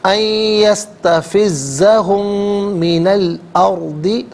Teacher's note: را ساکن ما قبل حمزہ پر زبر، را ساکن کو پر کر کے پڑھا جائے گا